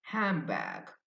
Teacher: But the native English speakers, they say M, the M sound, handbag.